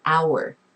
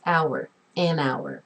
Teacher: You don't pronounce that H.